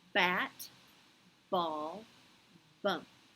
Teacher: your lips are closed at the beginning and a puff of air comes out